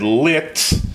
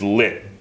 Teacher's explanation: really the way you would say it is lit, with an unaspirated t at the end.